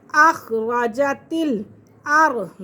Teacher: را ساکن سے پہلے اگر زبر آ جائے تو را کو پور کر کے پڑھتے ہیں